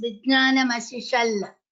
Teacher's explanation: The Ta is replaced by Lakara, mainly in place where Takara is half Takara.